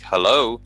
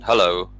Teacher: tend to be like hello it's very different than hello and the only real difference is the change in pitch between the words